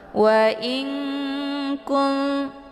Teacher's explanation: Di sini ada nun sukun bertemu dengan huruf kaf. Nun sukun bertemu dengan huruf kaf dibaca samar-samar sambil didengungkan. Karena nun ketemu dengan kaf yaitu ikhfa ab'ad, ya.